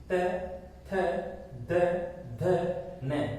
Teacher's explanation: कहने का तात्पर्य है कि जब आप इन वर्णों का उच्चारण करते हैं तो आपकी जो जीभ है वो दांतों से टकराती है, इसलिए दंते कहलाते हैं।